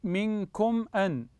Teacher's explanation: ميم ساكنه اتى بعدها حرف الهمز فهذا حكم الميم هنا احسنتم الاظهار